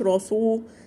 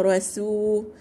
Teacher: يبقى ترققي السين عشان ما تطلعش معاكي صاد والراء مفخمة